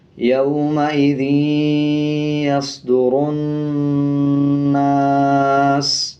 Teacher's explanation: اب یہ نون کے اوپر زبر ہے، اس کے بعد الف ہے تو 1 سیکنڈ کھینچ کے پڑھیں گے، اور نون کے اوپر شد ہے تو غنہ بھی کریں گے، یومئذ یصدر الناس، سین پیش سو، یومئذ یصدر الناس، وقف، یومئذ یصدر الناس، سین کے اوپر جو پیش ہے اس کو سائلنٹ کر دیں گے اور سین کی آواز کو آدھا پڑھیں گے وقف کرتے ہوئے